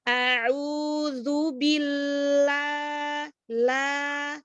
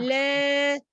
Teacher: lebih dibuka lagi untuk hamzah, untuk fathahnya ya. Jadi a'udzubillah, la, jangan le, tidak miring.